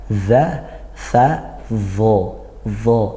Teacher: dia huruf rikhwah yang ngalir suaranya dan dia makhrajnya di ujung lidah bertemu gigi dari atas seperti huruf dzal dan tsa